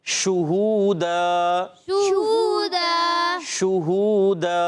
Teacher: تو شین پر پیش ہے، ہونٹ گول ہو جائیں گے